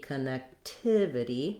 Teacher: my length and my stress is on the third syllable